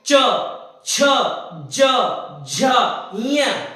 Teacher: जब चा बोलोगे तो आपकी जो जीभ है ना वो ऊपर तालू पर पूरी बिछ जाएगी। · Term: तालव्य व्यंजन